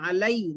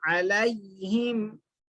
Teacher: अलई नरम आवाज से, मारूफ आवाज से पढ़ना, मजहूल आवाज नहीं करना, आवाज में झोल नहीं रहना.